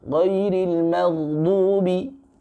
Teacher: Huruf ghain ini ya punya sifat isti'la, tapi juga punya sifat rakhawah, mengalir. Magh, jangan berhenti.